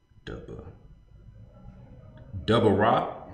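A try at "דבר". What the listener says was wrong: No, it ain't no I at the end. It's Debar. You might say Dabara, but it's Debar.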